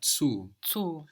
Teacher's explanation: The U in German is a long sound like food, no? Like the double O in food, unless we have a double consonant afterwards, shortening it, no? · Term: long vowel